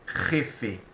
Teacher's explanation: A letra J, na língua espanhola, tem uma pronúncia diferente do português. Se pronuncia bem vibrante na garganta